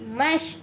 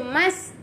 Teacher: Mash, kita tak baca mas. Kalau baca mas, huruf sin. Kita nak huruf shin.